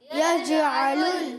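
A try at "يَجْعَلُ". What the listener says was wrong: اب دیکھیں ابھی بھی آواز آئی تھی, یجعل, یج نہیں, یجعل. گڈ, ابھی بھی تھوڑی آواز آئی ہے, اس کو بہتر کریں, بار بار سیکھیں. اچھا جیم حرف قلقلہ میں سے, حرف قلقلہ کتنے؟ 5, قاف طا با جیم دال.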